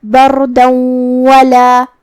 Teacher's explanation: واو حروف الادغام بغنہ میں سے ہے اور ادغام کا معنی ہے حرف کو حرف میں داخل کرنا، تو ہم یہ تنوین کو واو میں ملا کے غنہ اور تشدید کے ساتھ یہ حکم کو ادا کریں گے